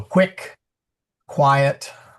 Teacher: Q is the same as the hard K sound, but since U always follows, it's a KW sound.